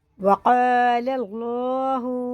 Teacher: اللہ کا لام زبر کے ساتھ ہے تو پر پڑھیں گے، پر یعنی موٹا کر کے، منہ بھر کے